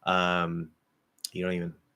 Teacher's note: the only way to really go faster is to drop the N and make the O nasal